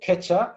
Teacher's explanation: So then you would have kecha, which, ke, again, so that would be first row, but kind of slightly stronger from my point of view, ke, and then cha, very aspirated